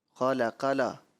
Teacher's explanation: قاف کو بھی آپ نے پڑھنا موٹا تھا لیکن آپ نے اس کو باریک انداز میں پڑھ دیا